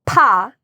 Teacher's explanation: In fact, if you hold a Kleenex in front of your lips and you go pa, the air can actually blow the Kleenex up because it's a strong puff of air